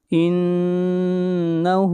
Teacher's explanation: اَوِجْهَرُوا بِهِ وَأَسِرُّوا قَوْلَكُمْ اَوِجْهَرُوا بِهِ إِنَّهُ نون کے اوپر شد ہے، غنہ ہوگا، ہو ہا کو کھینچ کر پڑھیں گے ایک الف کے برابر، ہا کے اوپر الٹا پیش ہے۔